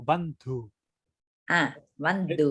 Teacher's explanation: la H hay que pronunciarla muy leve